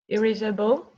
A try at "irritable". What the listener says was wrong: Good. You can say irritable, sure.